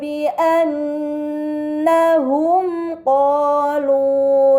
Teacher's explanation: terdapat mim sukun bertemu dengan huruf qaf, ini dinamakan izhar syafawi, maka mim sukun dibaca secara jelas